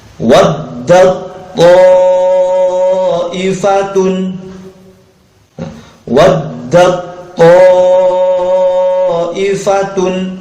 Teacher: Jadi selain bernama idgham mutajannisain, disebut juga dengan idgham kamil. Ya, idgham kamil, idghamnya sempurna. Sempurna masuk kepada huruf yang kedua.